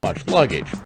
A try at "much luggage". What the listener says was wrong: 윗입술 올려주세요. luggage를 좀 길게 하시면 이렇게 약해져요.